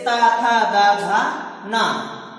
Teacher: वे वर्ण जिनके उच्चारण में जीवा दांतों का स्पर्श करती है, दांत को स्पर्श करते हुए उच्चारित करती है, जैसे ता, था, दा, धा, ना, वह दंत कहलाते हैं।